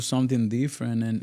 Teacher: The D in Spanish is dental and it's pronounced with the tip of your tongue hitting the teeth